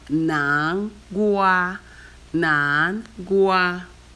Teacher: Nan is the second tone. Gua is the first tone.